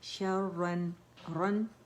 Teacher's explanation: غنّہ تھوڑا منہ سے آواز آئے گی, زیادہ ناک سے آئے گی